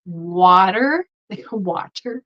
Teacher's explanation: the flap T is basically just a D sound um for example the word water water we just say deep